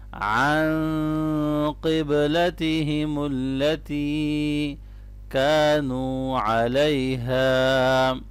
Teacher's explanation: الف مدہ کو بھی لمبا کریں گے اور واو مدہ کو بھی لمبا پڑھنا ہے